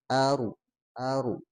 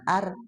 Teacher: ro sukun sebelumnya ada alif, nah dia tebal ro-nya tapi a-nya mah tidak tebal ya